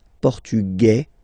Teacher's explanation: masculine portugu you don't pronounce the s